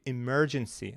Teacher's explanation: The second syllable should be stressed.